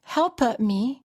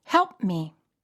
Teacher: words better when the stop sound is followed by another consonant you must hold the stop sound in other words don't release the puff of air after you create the sound with your lips or tongue releasing